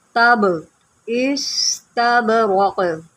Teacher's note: यहाँ पर बा है, हरूफ क़लक़ला में से है, तो यहाँ पर हम क़लक़ला करेंगे।